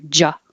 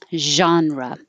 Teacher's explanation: you hear ja that means you need more air flow and remember the sound is the same as shh that puts your tongue and everything in the right position and the only difference is you need sound you need vibration